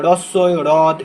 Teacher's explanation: হয়ে র ফলা, যেমন ধরো হ্রদ, ঠিক আছে, অনেকে দেখবে হ্রদ উচ্চারণ করে। এই যে হয়ের নিচে যখন র ফলা থাকে তখন হয়ের উচ্চারণটা সুপ্ত থাকে, তখন রয়ের উচ্চারণ হবে, রস্যই, হ্রদ, এরকম উচ্চারণ হবে।